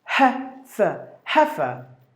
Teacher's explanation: So the first syllable is given more volume.